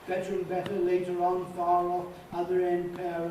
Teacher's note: All those normally have an R in, and they sound artificial, they sound awkward if you don't put the R in.